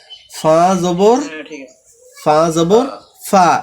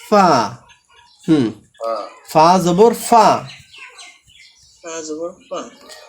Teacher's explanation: সামনের উপরের দাঁতের আগা এবং নিচের ঠোঁটের পেটের সাথে লাগায় ফা। হ্যাঁ, দুই ঠোঁট একসাথে লাগায় না, কিন্তু সামনের উপরের দাঁত, হ্যাঁ, এবং নিচের ঠোঁটের পেট ফা।